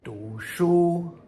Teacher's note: Here's another character that can also be pronounced do, but primarily it is second tone du